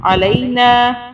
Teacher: نون کے آگے الف آ رہا ہے تو یہاں ہم ایک الف کے برابر کھینچیں گے